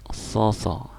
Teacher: So itu hampir sama dengan sa tapi lidahnya naik.